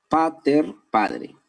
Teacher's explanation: Porque la T, que era sonido sordo, ha pasado a la D. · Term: sonorización